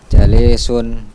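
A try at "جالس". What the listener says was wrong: Iya, jalisun. Jimnya yang panjang, bukan lamnya.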